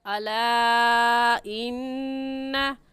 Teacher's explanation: और कायदा ये है कि हुरूफ़ मद्दा के बाद हमज़ा अगले कलमे में आ जाए तो उस मद को 3 अलिफ के बराबर खींचेंगे, ना इससे कम और ना ही इससे ज़्यादा। ऐसे और नून मुशद्दद है, नून मुशद्दद पर गुन्ना करेंगे